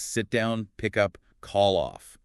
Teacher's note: the stress often falls on the particle